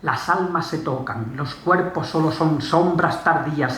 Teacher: La consonante fricativa alveolar sorda, que es la S, la nasal N y la nasal bilabial